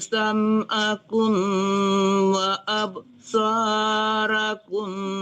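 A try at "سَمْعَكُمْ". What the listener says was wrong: Sam'akum itu jangan tertahan di kumnya itu ya. Kum itu tidak dengung ya.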